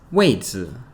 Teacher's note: Okay, so a seat or a position is 位子. 位子 Fourth tone, neutral tone.